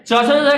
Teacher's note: च छ का उच्चारण तालू से होता है